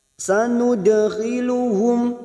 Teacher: dal sukun qalqalah sugro yang mati asli di tengah kalimat, jangan lupa dipantulkan. · Mim sukun dibaca jelas tanpa mendengung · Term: idhar safawi